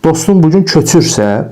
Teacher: ür vurğu qəbul etdi